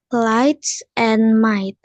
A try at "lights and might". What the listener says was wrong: Got it. Nggak pakai suara g. Udah bagus. Sip.